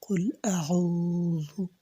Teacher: আর একটা কথা হলো এখানে আইন, আইন কিন্তু সবাই উচ্চারণ করতে পারে না, তো আইন আপনাকে উচ্চারণ করতে হবে। তো আইন আপনাকে গলার চাপ দিয়ে উচ্চারণ করতে হবে